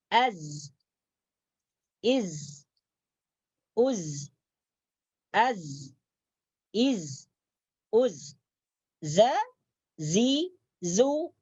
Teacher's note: Huruf zai adalah sifatnya as-safir. Sifatnya as-safir, berdesis.